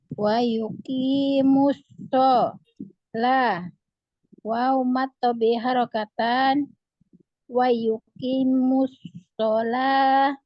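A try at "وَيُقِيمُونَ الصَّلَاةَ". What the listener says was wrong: Wa yuqimus shalah. bukan begitu, santai aja. Yang namanya di aja itu memang dia pelan-pelan. Bukan bukan begitu. Jadi enggak seimbang mizannya, enggak datar di mizannya. Nah, itu disebut dengan isbah itu. Jadi ada yang cepat, ada yang lambat dalam satu bacaan.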